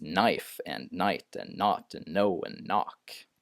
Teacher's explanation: k is directly followed by an N uh they they can't in English generally they don't pronounce K and N together · in English, generally they don't pronounce K and N together, even though many other languages do. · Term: silent k, silent K